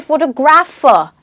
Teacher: you suddenly stress on ‘grapher’ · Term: word stress